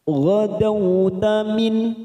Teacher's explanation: nun sukun bertemu hamzah kita baca jelas tanpa mendengung, namanya bacaan idhar halqi.